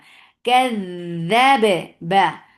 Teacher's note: Ba will get a nice clear qalqala and ba will be light.